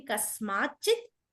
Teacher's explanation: కస్మాత్ తకారం వచ్చినప్పుడు త కాస్త చ గా మారిపోతుంది